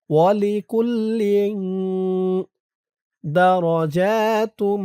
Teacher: কাফ লাম পেশ কুল, লাম দুই জের লেং, ইকফা গুন্নাহ, তানবিনের পরে ইকফার হরফ দাল আসছে। লেং, ইকফা গুন্নাটা নাকের ভিতরে যাবে।